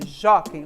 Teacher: Onde está a sílaba tônica? No jó, certo? E a palavra terminou com EI.